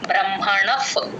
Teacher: దీర్ఘం లేదు ఇక్కడ బ్రహ్మణ తర్వాత ఉన్న విసర్గ ఎఫ్ సౌండ్ లాగా రాసేసుకోండి ప ముందు ఎప్పుడు విసర్గ వచ్చినా ఎఫ్ సౌండ్ లాగా చెప్తాం బ్రహ్మణఫ్ అలా గాలి బయటికి వదలాలి ఎఫ్ అన్నప్పుడు బ్రహ్మణ పతి టి హెచ్